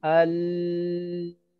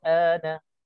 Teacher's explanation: Okey, jadi itu semua cara yang salah. Yang betulnya kita kena panjangkan a di sini. Cukupkan 6 harakat baru pergi kepada lam.